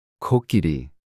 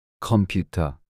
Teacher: place the back of your tongue against the soft palate at the back of your mouth, and push air out with a burst, making a sound similar to K. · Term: 기억